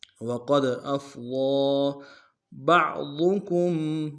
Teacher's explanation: ضاد کو موٹا ادا کریں گے اور ضاد کے اوپر کھڑا زبر ایک مقدار میں کھینچیں گے